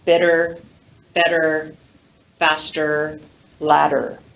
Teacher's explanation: listen carefully to the quality of that unstressed r colored schwa